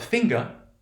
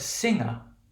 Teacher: So we say the g for finger, right? But we say that we don't have that g for singer.